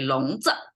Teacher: it's always with z and it's a light tone